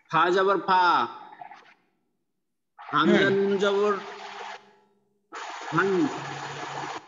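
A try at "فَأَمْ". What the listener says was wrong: আন আন হবে না, মিম দ্বারা পরিবর্তন করবেন না? হ্যাঁ আম হবে, মিম দ্বারা পরিবর্তন করবেন তো।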